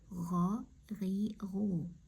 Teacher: G'oyn harfida hech qanday qirillash bo'lmasligi kerak.